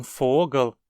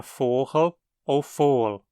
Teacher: um som de ga em alemão, quando no meio ou fim das palavras, se torna /xa/ ou desaparece em hunsriqueano